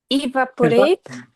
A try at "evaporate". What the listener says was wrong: It's not E. Okay, guys, be careful about the E sound.